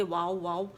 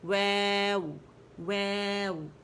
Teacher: وے باریک ہے، ہونٹوں سے بھی نہیں لگانا کہ واو بنا دے